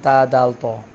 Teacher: اگر آپ سے کوئی سوال کرے کہ یہ تو کہاں سے ادا ہوتا ہے، یا دال یا تا کے حوالے سے وہ پوچھے کہ یہ کہاں سے ادا ہوتے ہیں، تو آپ نے بتانا ہے ان کا مخرج کہ زبان کی نوک اوپر والے دانتوں کی جڑ سے لگے، زبان کی نوک جب اوپر والے دانتوں کی جڑ سے لگے تو یہ 3 حروف ادا ہوتے ہیں، تا، دال، تو۔